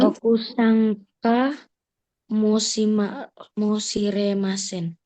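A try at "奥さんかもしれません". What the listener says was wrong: Hai, okusang gitu. Kamu shiremasen tidak boleh dipisah ya. Okusangka bukan begitu. Okusang kamu shiremasen gitu.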